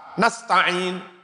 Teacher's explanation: Itu antara sin mati sama ta yang jelas.